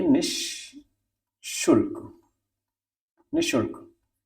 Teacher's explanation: तो ये, अब चूंकि ये श आपका हमारा तालव्य श है, तालव्य श की वजह से ही निस जो होगा, स होगा, वो तालव्य श में बदल जाता है, इसीलिए ये निःशुल्क, निःशुल्क हमारा ये सही है।